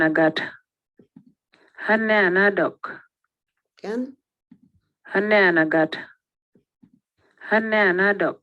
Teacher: there is a change in F0 from level low to rise